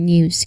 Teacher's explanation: So it's the news it's the N sound where your tongue tip touches behind your teeth. Okay, it's the N sound where your tongue tip touches behind your front teeth immediately followed by the Y sound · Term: NJ cluster